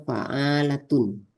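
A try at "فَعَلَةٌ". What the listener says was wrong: Ainnya nggak panjang.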